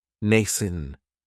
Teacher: It has the long A sound, nascent. That second syllable has that schwa